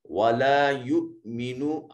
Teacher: حمزہ ساکن ہے، جھٹکے سے ادا کیا جائے گا